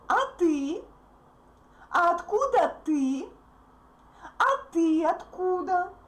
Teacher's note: In his question back, a word ты is stressed.